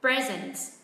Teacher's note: Chúng ta hạ giọng âm tiết thứ hai